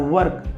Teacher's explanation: हमें वर्क बोलने के लिए पहले मुंह को होठों को सटाना पड़ रहा है